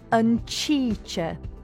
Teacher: Slender S, sh, as in sheche, weather, hardens to ch